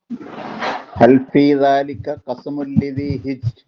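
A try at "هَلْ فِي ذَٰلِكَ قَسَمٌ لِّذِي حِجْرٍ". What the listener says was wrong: കൽക്കലായിട്ടില്ലായിരുന്നു നേരത്തെ. അപ്പൊ ഇവിടെ അങ്ങനെ എഴുതിയത് ഹിജിറിനാണോ ഹിജിരിന്നാണോ? ഹിജിരിന്നാണല്ലേ? ഹിജിരിന്നാണ്. പക്ഷെ ഹിജിറിനാവുന്നത് എന്തുകൊണ്ടാണ്? നമ്മൾ വഖഫ് ചെയ്യുന്നത് കൊണ്ടാണ്. വഖഫ് ചെയ്തില്ലെങ്കിൽ അവിടെ എന്തില്ല? ഈ നിയമം വരുന്നില്ല. വഖഫ് ചെയ്യുന്നില്ലെങ്കിൽ ഇവിടെ ഒരു നിയമം ഉണ്ടാവില്ല. അടുത്ത അക്ഷരത്തിലേക്ക് അങ്ങ് പോകും.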